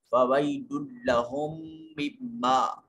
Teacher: یا ساکن ہے، ما قبل مفتوح ہے، یا لین ہوگا، اور یہاں دونوں میموں پہ غنہ واجب ہے · ویل میں یا ساکن ہے، ما قبل مفتوح ہے، یا لین ہوگا